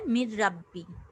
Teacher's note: এখানে নুন হরফটি পরবর্তী রায়ের সাথে ঈদগাম হয়েছে। মির রাব্বি, নুনটা কিন্তু উচ্চারিত হচ্ছে না, কি হচ্ছে? মির রাব্বি।